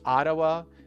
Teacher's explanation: because of the double T, you kind of transform it into a flap D